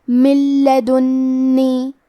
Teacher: یہاں حکم ہے ادغام بغیر غنہ، تو ہم یہ حکم کو بغیر غنہ سے لیکن تشدید کے ساتھ ادا کریں گے۔ من لدنی، کلمت لدنی میں نون کو 2 حرف کے برابر پڑھیں گے کیونکہ اس پہ تشدید ہے۔